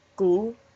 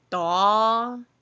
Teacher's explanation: gu is much shorter. Da is much longer.